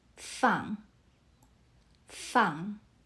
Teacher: Fang uses the fourth tone. Your voice drops firmly.